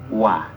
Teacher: ketika kita mau mengucapkan wau terlebih dahulu dua bibir kita itu sudah membentuk bulatan ya kalau bahasa enaknya sudah dimonyongin dulu ya bibir kita sudah